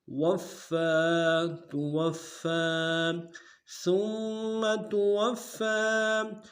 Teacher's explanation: زور دیں گے، واو کو آگے فا کے ساتھ ملانا ہے، فا کے اوپر تشدید زور دیں گے اور کھڑا زبر ہے ایک مقدار میں کھینچیں گے